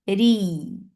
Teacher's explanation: As you will touch Ra, your lips should be in a straight position, and Ra will be light because it has kasra